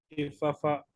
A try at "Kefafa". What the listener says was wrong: très bien, Kefafa. Il n'y a pas le point, donc ce n'est pas le Kepapa, mais c'est bien Kefafa.